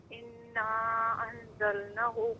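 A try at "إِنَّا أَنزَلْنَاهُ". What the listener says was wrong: اناہو، اس کو ذرا کھینچے نا، انزلناہ۔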